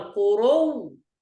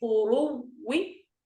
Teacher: الوجه الأول قرو هكذا بالتشديد فقط، الوجه الثاني قروي هكذا بالتشديد مع روم الكسرة مصاحبا لهذا التشديد